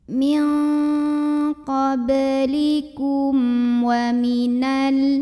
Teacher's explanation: Berikutnya ada hukum idhar syafawi karena ada mim sukun yang menghadapi huruf selain mim dan ba, yaitu huruf waw. Maka mim sukun ini dibunyikan dengan izhar atau jelas bunyi M-nya.